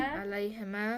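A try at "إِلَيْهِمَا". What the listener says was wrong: Ilayhima. Don't say alay. Ilayhima.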